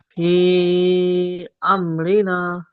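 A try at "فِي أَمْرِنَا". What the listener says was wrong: ফি, এই নাটা টান কম হয়ে গেল না। না, নাটা তাড়াতাড়ি,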